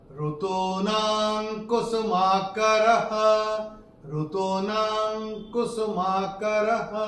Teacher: चरण की समाप्ति पे विसर्ग का उच्चारण केवल और केवल ह होगा, क्योंकि चरण की समाप्ति पे आ रहा है। · और चौथे चरण में ना के ऊपर अनुस्वार के बाद का अक्षर है क, और अनुस्वार के बाद जब क आएगा तो अनुस्वार का उच्चारण होगा अंग।